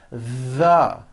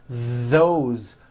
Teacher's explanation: That's the voiced th. You should be able to feel a strong vibration in your throat and on your tongue.